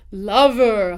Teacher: So unstressed r colored schwa is for your unstressed eer endings. · So the stress is on la. The unstressed part is the ver half of that.